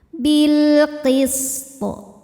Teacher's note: sin punya desis atau sifat sofir, ciri khas dari sin yang tidak dimiliki huruf lain kecuali sin, zai, dan sod.